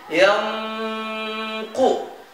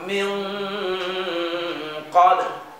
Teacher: nah nun matinya itu condongan ke huruf qaf. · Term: ikhfa ab'ad